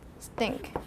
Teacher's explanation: This T is a regular T without aspiration.